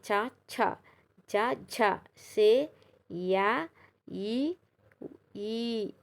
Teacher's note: దవడలతో పలికే అక్షరాలు తాలవ్యాలు